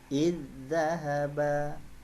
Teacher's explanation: karena dia jenis hurufnya sama, kemudian sifat hurufnya juga sama, maka zalnya sukun ini sudah diwakili oleh zal yang bertasdid